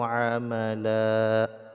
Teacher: ini dipanjangkan dua harakat tanwinnya tidak dibaca lagi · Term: waqaf